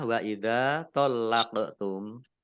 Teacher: Wa idza tallaqtum zal fathah alif maktobi'i panjang 2 harokat, lamnya dibaca double, ada tasdidnya, qaf sukun, bacaan kolkolah, dibaca memantul, ditampakkan pantulannya